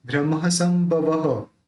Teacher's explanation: जो बिंदी है उसका म उच्चारण होगा, क्योंकि ब है, ब बोलते समय दोनों मिलते हैं तो उस र के ऊपर जो बिंदी उसका म निकलेगा।